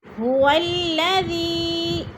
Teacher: هو الذی، ذی پہ جو ہے مد منفصل ہے، حروف مدہ کے بعد حمزہ دوسرے کلمے میں آ گیا ہے تو مد منفصل 4 الفی مد ہیں، 4 الف کے برابر ہم نے اس کو کھینچ کر پڑھنا ہے